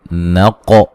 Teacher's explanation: قاف کو موٹا ادا کریں گے